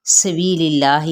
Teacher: सीन पे सीटी को वाज़े करेंगे, इसमें जलाला का लाम बारीक पढ़ा जाएगा।